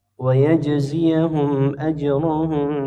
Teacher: Ya, dua-duanya dibaca qalqalah huruf jimnya.